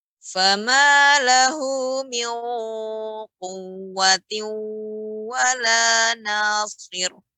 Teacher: fama lahu min di sini lebih dalam lagi karena qaf termasuk huruf isti'la.